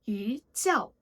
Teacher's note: When E is followed by a fourth tone syllable, it's pronounced with the second tone. E. Since 叫 is the fourth tone, E changes to the second tone, so it sounds like 鱼叫.